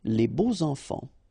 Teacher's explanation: even if you've got this X, well, phonetically it will be like Z, so like if it would be an S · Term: liaison